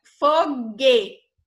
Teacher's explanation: O grupo GU chama-se dígrafo, quando antes de E e I, o U não é pronunciado.